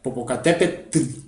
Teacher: al final se escribe con un ate y con una l no hay una vocal entre la t y la l pero se escucha